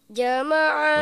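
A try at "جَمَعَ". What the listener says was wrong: Nah, masih ja, ja. Nah, ini coba ditengahkan lidahnya.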